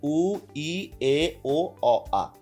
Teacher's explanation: উ উচ্চারণ করতে ঠোঁটের মধ্যে খুব কম জায়গা নেয়, ই আর একটু বেশি জায়গা নেয়, এ তখন আরেকটু ঠোঁটটা খুলে যায়, আরেকটু বড় হয়, ও এটা আরেকটু বড় হয়, অ আরও যাই বেশি জায়গা নিয়ে ঠোঁটটা কথা মানে আমাদের ঠোঁটের জায়গা বেশি নেয় আর কি, অ।